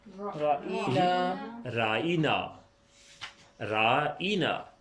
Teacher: را کے اوپر ترچھی زبر ہے اور ساتھ الف ہے، تو یہ الف معروف کی پوری آواز ہو گئی